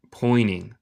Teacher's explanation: En el acento estadounidense no decimos el T. Pointing. Pero tú puedes decir pointing y está bien.